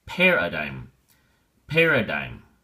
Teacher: paradigm has three syllables and the emphasis or stress is on the first syllable